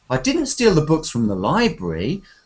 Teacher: you need to stress the word Library